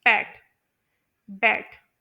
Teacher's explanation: लेकिन अगर आप लोग इसे नेटिव प्रोनाउंसिएशन के अकॉर्डिंग पढ़े या फिर आप लोग इसे जो है करेक्टली प्रोनाउंस करें तो इसमें जो दोनों लिप्स आप लोग महसूस करेंगे वो इकट्ठे जो है मिल रहे होते हैं प्रोनाउंस करते हुए।